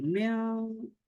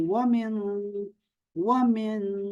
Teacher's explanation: اس کے بعد جو حرف ہے وہ حلق سے نہیں نکلتا، تو اس لیے ہم اس کو یہاں پر غنہ کریں گے